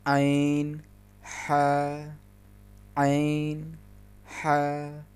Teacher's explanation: مخرج نمبر 3 میں عین ہا شامل ہیں۔ عین ہا حلق کے درمیانے حصے سے ادا ہوتے ہیں۔ حلق کے اس درمیانے حصے کو وسطائے حلق بھی کہتے ہیں۔